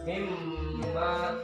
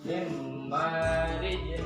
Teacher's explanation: Nun mati bertemu mim itu idgham di gunnah, maka dibacanya harus digunnah mimma gitu.